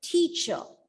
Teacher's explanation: The letter R, when it comes at the end, let it go silent.